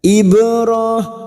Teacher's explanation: bak sukun qalqalah sugra yang mati asli di tengah kalimat jangan lupa dipantulkan. Ibrah, ro alif kecil di atas 2 harokat kita panjangkan.